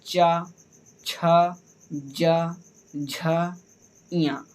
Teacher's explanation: चा को बोलते समय हमारी जो जिह्वा है वो हमारे तालु को स्पर्श कर रही है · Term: चा वर्ग